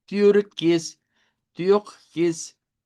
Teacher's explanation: como hacer la i y la u al mismo tiempo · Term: I redonda